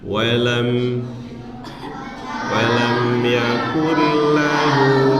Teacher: Walam yakul lahu itu namanya hukumnya idgham bila gunah ya. Dia masuk tapi tanpa dengung ya.